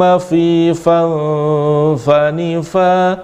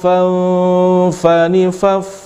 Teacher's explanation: gigi seri mengenai perut bibir bawah